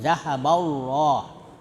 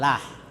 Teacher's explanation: Lamul mufakhah itu lam dibaca tebal ya karena huruf sebelumnya fathah. Jadi zahaballah ya loh pakai loh bukan lah ya. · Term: lamul mufakhamah